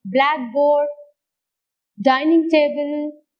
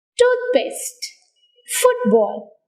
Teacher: compound nouns take stress on the first syllable